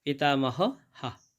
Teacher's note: এখানে বাক্যের শেষে বিসর্গ রয়েছে, তাই জন্যে শেষের বিসর্গার উচ্চারণটা পুরো হয়ের মতো হবে